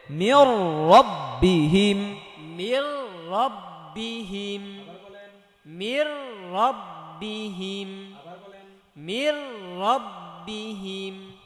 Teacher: মির, এই যে নুন পড়ে যাবে, সরাসরি রকে ধরবে, মির মির। রয়ের মধ্যে যেহেতু জবর, সো রটা মোটা করে পড়তে হবে, পর করে পড়তে হবে।